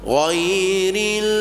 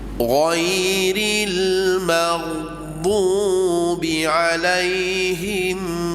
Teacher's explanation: suara tertahan angin juga tertahan sebelum keluar bunyi dad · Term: istitalah